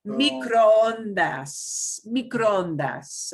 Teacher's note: we just drag out that double O